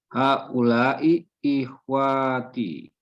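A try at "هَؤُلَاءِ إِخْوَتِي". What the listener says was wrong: Pendek, ikhwati.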